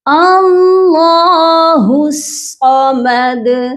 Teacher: صاد کو بھی آپ نے جو ہے ہیوی پڑھنا ہے، یہ بھی حروف مستعلیہ ہے یعنی کہ ہیوی لیٹر ہے، اللہ الصمد۔